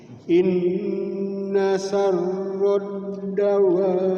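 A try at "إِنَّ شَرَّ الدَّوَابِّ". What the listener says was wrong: Ya, sekali lagi Pak Haji. Inna syarrad, sin besar.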